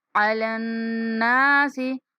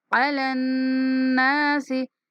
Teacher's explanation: नून के ऊपर गुन्ना करते हुए 1 सेकंड तक लंबा करेंगे। नून के बाद अलिफ मद्दा है।